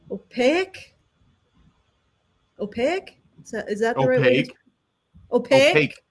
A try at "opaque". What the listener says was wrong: No, opaque. Not opaque. Opaque. You're adding a syllable. It's just opaque.